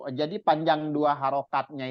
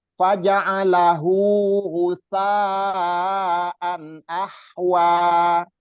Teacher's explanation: jadi panjang 2 harokatnya itu jangan terlalu panjang juga, diayun aja sedikit, sekali ayun aja